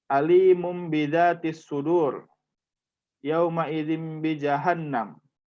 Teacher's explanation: maka pengucapannya ada pada huruf mim yang diucapkan dengan dengung dan disamarkan sepanjang 2 harokat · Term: iklab